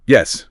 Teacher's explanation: For a straightforward statement like yes, your voice just naturally goes down.